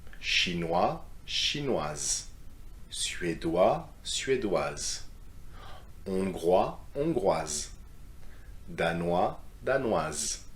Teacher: you need to finish with the Z sound for feminine